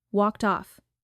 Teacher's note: walked off ends with a t that touches the next vowel softly